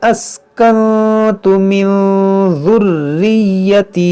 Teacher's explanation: नून साकिन के बाद ता है, यहाँ पर इख्फा करेंगे